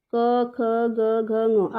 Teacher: ये कंठ का मतलब होता है गला, यानी कि ये वर्ण किससे बोले जाएंगे? सीधे गले से आवाज आएगी। आप इनको बोल के देखिएगा, गले से आवाज आएगी कंठ में।